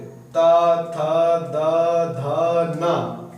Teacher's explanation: ये त वर्ग में आते हैं ये दंत से बोले जाते हैं